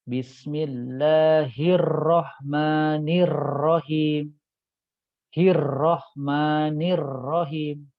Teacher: surah al-fatihah ya ya temukan dua huruf ro bertasydid ya jadi ketika bertasydid tadi ada kaidah khusus kaidahnya apa getaran ujung lidahnya tidak boleh jelas